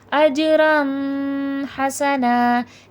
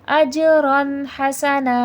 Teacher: تو اس میں غنہ نہیں کریں گے، بس اظہار کریں گے ، یعنی کہ صرف وہ لفظ کے ہجے کریں گے اور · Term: اظہار حلقی